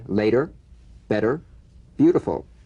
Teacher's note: the medial t becomes a soft d all right it's not a complete d but it goes toward a d